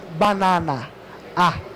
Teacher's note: O A, em particular, é sempre aberto, ok? Então é banana, A.